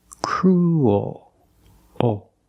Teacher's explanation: Crew. And when you make the dark L, the mouth opens a little bit. Oh. So when you link those sounds, when the mouth opens a little bit, you get a little bit of an extra sound.